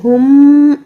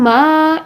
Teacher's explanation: ٹھیک ہے، 1 سیکنڈ رکھیں گے، میم کی زبر کو 1 سیکنڈ رکھیں گے، غنہ کو ہم 2 سیکنڈ کریں گے